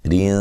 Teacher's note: را کو باریک پڑھیں گے اور نون تنوین کا اخفا ہے باریک